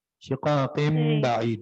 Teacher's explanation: اب اس نون کو، یہ جو تنوین ہے اس کو ہم میم سے بدل دیں گے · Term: اقلاب